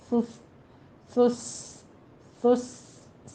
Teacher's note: ہے، سس سماواتی، سا نرمی سے پڑھتے ہوئے، سس سس سس، سین میں سیٹی کی آواز آ جائے گی